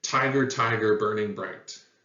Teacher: you can hear that the emphasis starts on the very first syllable and then it alternates